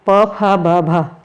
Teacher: होठों से ये बोला जाता है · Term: प वर्ग